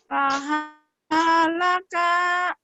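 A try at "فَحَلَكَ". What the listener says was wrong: Nggak ada yang panjang, ulangin. Fahalaka.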